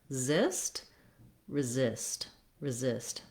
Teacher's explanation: The second syllable is long. It has the length and the clear vowel. And so you want to practice this word by starting on that syllable and then just tack on your first syllable as a short little stepping stone.